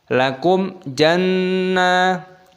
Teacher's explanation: Mim sukun bertemu dengan jim, idhar syafawi dibaca jelas.